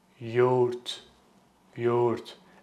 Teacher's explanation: Soft G doesn't make a sound.